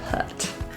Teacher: The word put has the epsilon vowel, meaning a closed or more closed jaw with protruded lips. Rather than ooh.